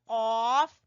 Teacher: जबान की जड़ से अदा हो रहा है कौफ, जबान की जड़ से कौफ, इसको मोटा कौफ कहते हैं।